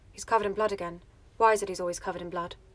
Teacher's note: go slightly lower and get rid of any kind of musicality and make it very monotone